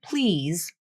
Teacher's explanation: that final consonant though voiced and the IPA would also show that it's voiced will lose a lot of its voicing at the end the first part of the consonant will maintain some voicing but · the first part of the consonant will maintain some voicing but it's the final portion of the consonant where the voicing is dropped · you still pronounce the preceding vowel with a slightly longer duration because a voiced consonant still technically comes next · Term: vowel length rule